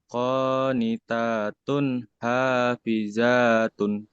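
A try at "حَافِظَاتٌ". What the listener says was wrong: kenapa Hafiza? Hafizo, bunyi O ini mah. Qanitatun hafizatun.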